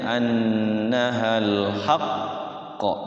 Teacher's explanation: jadinya annahal haqqo ditahan dulu baru dipantulkan